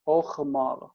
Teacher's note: That this is the o, and the chet just doesn't want the silent shva, so it takes the vocal shva that matches that, which is o.